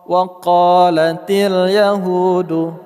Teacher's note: Qa panjang 2 harakat, hu panjang 2 harakat.